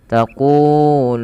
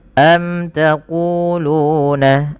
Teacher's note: Mim mati bertemu dengan ta dibaca dengan jelas suara mimnya karena dia idhar syafawi. Kemudian panjang ku dan lu harus sama karena kedua-duanya mad tabi'i.